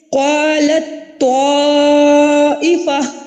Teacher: تا کا تو میں ادغام ہو رہا ہے، تو تا اور تو ان کا مخرج سیم ہے نا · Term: ادغام متجانسین صغیر